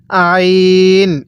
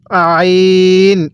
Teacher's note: আইনটা পড়ার সময় আমরা গলার মধ্যে হালকা চাপ দিয়ে পড়বো